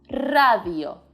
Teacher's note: when the r is at the beginning of the word it's considered a strong r and you know what that means it's time to roll the tongue